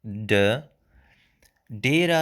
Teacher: Be careful, the d sound, it's a retroflex.